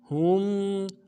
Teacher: اس کے بعد ولا ہم لام کے بعد الف مدہ ہے، ایک الف مدہ میں کھینچیں گے، ہا کو میم ساکن کے ساتھ ملانا ہے، میم ساکن میں غنہ کریں گے